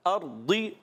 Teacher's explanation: را ساکن سے پہلے زبر آ گیا تو را پر ہو جائے گا